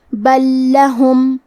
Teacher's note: کلمت بل کے آخری میں لام ساکن ہے، پھر حرف اللام ہے کلمت لہم، یہاں حکم ہے ادغام، تو ہمیں پہلے لام کو دوسرے لام میں ملا کے ایک ہی لام اور تشدید کے ساتھ پڑھنا ہے